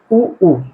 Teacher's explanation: ओठ जो है वृत्ताकार में बन रहा है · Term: ओष स्वर